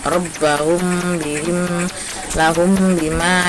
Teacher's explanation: Robbahum, lahum bima ya, didengungkan. Tetap mulutnya tertutup tapi didengungkan ya. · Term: ikhfa safawi